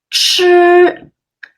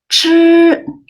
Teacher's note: 吃, you can feel more air come out.